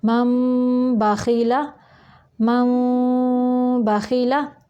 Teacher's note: تو یہ دیکھیں نون ساکن کے بعد حرف با آ گیا ہے تو ادھر اقلاب ہوگا، یعنی ہم نون کی آواز کو میم میں بدل کر پڑھیں گے